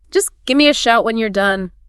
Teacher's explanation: More sound reduction. Give me often gets squashed into gimme.